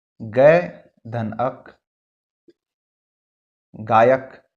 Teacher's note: तो ए और अ का उच्चारण जो है यहां पर य हो जा रहा है। विच्छेद करते समय ध्यान देंगे जहां पर भी ओ ए औ रहे, ओ ए या फिर औ या फिर ए, इस प्रकार का यदि पहले रहे और उसके बाद जो उच्चारण है वो व य इस प्रकार का व्यंजन यदि हो जा रहा है तब वो है अयादि स्वर संधि।